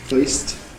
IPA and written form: fɜɪst (first)